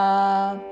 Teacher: విసర్గ తరువాత పదములోని ప అందుకుంటూ శ్వాస వదిలి చివరిన ఫ లాగా ఉచ్చరిస్తూ